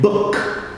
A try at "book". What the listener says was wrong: Don't close your lips.